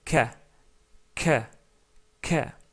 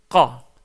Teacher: Il faut savoir que la première chose, que la lettre Kaf et la lettre Qaf, ils ont le même point de sortie de la bouche. Donc, si vous exercez le même mouvement de la langue, en faisant juste un léger recul du fond de la gorge, vous allez pouvoir prononcer la lettre Qaf. C'est-à-dire, donc, prononcez la lettre ou le son K, K, K.